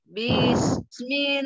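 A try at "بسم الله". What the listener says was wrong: Jangan panjangkan kasrohnya. Bis itu tamtil namanya ya. Jadi dia harokatnya satu saja. Bis, bis. Jadi jangan bis, jangan ada ayunan karena dia hanya bersatu harokat.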